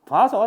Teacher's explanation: 오 더하기 아가 오 반모음 더하기 아가 되었네 라고도 설명을 할 수 있다고요.